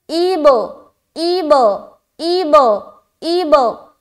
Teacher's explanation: جب ہم حمزہ کو با سے ملائیں گے تو اپنی آواز کو ٹکرائیں گے, ہماری آواز لوٹتی ہوئی معلوم ہوگی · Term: قلقلہ